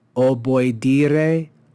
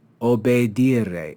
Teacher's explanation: We have the verb o boy, the diphthong o-e, which is pronounced oe, o boy dire, o boy dire, was changed over time to simply obedire. So the o and the oi sound of the diphthong was replaced with a simple long e